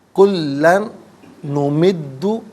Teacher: کلن نمد، کلن میں لام پر 2 زبر کی تنوین ہے، اس سے نمدو کے نون کے ساتھ ملائیں گے، نون کی آواز کو غننے کے ساتھ ادا کیا جائے گا. یہاں یرملون کا جو قاعدہ ہے وہ اپلائی ہوگا.